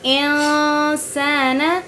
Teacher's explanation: نون ساکن اس کے بعد اخفا کے حرفوں میں سے سین آ رہا ہے تو یہاں پر اخفا کریں گے، غنہ کریں گے، لیکن آواز کو چھپائیں گے